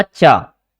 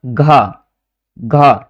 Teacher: इसके बाद मैं बोलूंगा घा, घा, देखो घा में क्या हो रहा है, घा में किसी भी प्रकार से टच नहीं हो रही, यानी कि जिह्वा हमारी तालू से टच नहीं हो रही है ना।